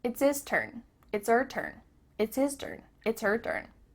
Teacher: The H at the beginning of his and her is cut off.